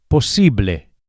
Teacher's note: the final e sound, as always in Spanish, is a pure vowel, not a. Don't say posible, but posible.